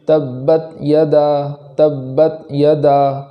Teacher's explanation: تا میں آواز بالکل ختم کر دیں گے، اس کے بعد آگے والا حرف پڑھیں گے اس طریقے سے تبت یدا، تبت یدا۔ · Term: جزم